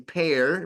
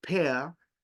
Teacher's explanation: the r in British English does not sound